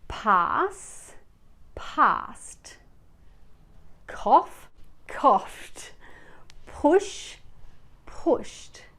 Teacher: For any regular verb that ends in an unvoiced sound like s, f, p, k, f, sh, ch, the ed ending is pronounced with a t sound